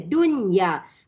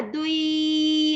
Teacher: nun mati bertemu ya di dalam satu kalimah. Makanya dengung tidak berlaku. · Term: izhar mutlak